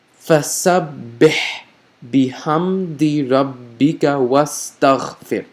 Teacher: notice for this H, I made a loud, audible H consonant sound, right? And you may think of it from the throat, so that's pretty much what it is. · And you may think of it from the throat, so that's pretty much what it is. So again, it makes a strong H sound from the throat.